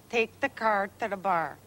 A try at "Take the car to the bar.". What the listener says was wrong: You said ta. To the bar. The, not duh.